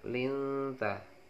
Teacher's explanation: nun sukun ketemu huruf ta itu dibaca samar adalah ikhfa, linta.